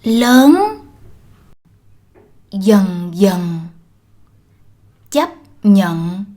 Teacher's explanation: In the South, words like these are pronounced with a ng.